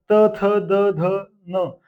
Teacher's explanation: ज्याचा उच्चार करताना जीभ दाताला लागणार किंवा स्वर दाताला घासून व्यंजन वर्ण दाताला घासून बाहेर पडत त्यांना दंते म्हणायचं